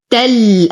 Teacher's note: أنتقل من فتحة التاء إلى إسكان اللام القمرية